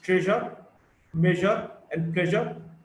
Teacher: J, voiced post-alveolar fricative.